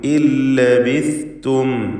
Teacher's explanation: ഇൻ ലബിസ്തും എന്നതിൽ സാക്കിനത്ത നൂനിനെ പൂർണ്ണമായും ശേഷമുള്ള ലാമിൽ ലയിപ്പിച്ച് മണിക്കാതെ ഉച്ചരിക്കുന്നു. ഇദ്ഗാം ബിഗൈരി ഗുന്ന കാമിൽ.